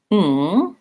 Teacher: So the NG says which is a sound where I'm lifting the back of my tongue. It's not an N plus a G sound. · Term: NG sound